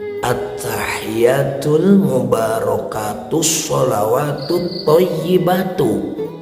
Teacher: Tidak ada tasydid dari kalimat at-thayyibatu ke kalimat lillah. Tidak ada idgham di sana.